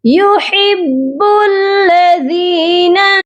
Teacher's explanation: ان اللہ یحب الذی، ہا کی آواز حلق سے آئے گی، با مشدد ہے، ہا کو با کے ساتھ سختی سے ملا کر پڑھیں گے اور با کو لام مشدد کے ساتھ ملایا جائے گا